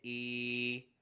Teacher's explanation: یہاں پہ بھی واو کی طرح یا ساکن سے پہلے زبر ہے، یا لین ہوگا، بغیر کھینچے پڑھنا ہے. اور یہاں یا ساکن سے پہلے زیر ہے، یا مدہ ہوگا، کھینچ کر پڑھیں گے